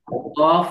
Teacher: দাঁত লাগাইতে হবে দুই ঠোঁট একসাথে লাগানো যাবে না